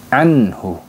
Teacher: halqi jadi seperti itu teman-teman jadi cara membaca izhar halqi yaitu dibaca jelas sukunnya tidak boleh ditahan dan tidak boleh didengukan